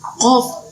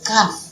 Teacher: sama-sama makhrajnya di pangkal lidah, tapi satu qaf tebal, satu kaf tipis